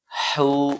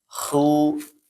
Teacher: haknya bersih ya. Jangan sama kayak kha.